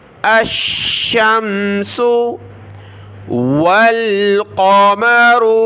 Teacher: واو کو لام کے ساتھ ملایا